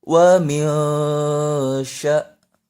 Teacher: nun sukun bertemu shin itu ikhfa dibaca samar.